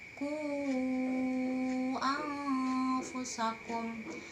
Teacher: Terpisah berhenti di ku, tapi tidak menjadi panjangnya 5 harokat, menjadi mad tabi'i. Nah, dibaca panjang menjadi mad jaiz munfasil apabila dibaca menjadi satu